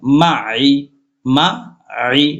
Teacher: মিম জবর মা, আইন জের আই, একটু চাপ দিয়ে পড়তে হবে হলকের মধ্যখান।